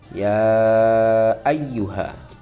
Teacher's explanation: ya ayyuha itu dibaca lima ketukan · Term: mad wajib muttasil